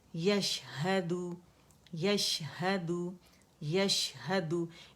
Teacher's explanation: اس میں جو تفشی ہے شاورنگ ساؤنڈ ہے